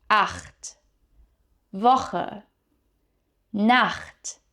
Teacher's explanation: The ach sound is pronounced in the back of your throat, right here, almost like you're trying to clear something stuck down there.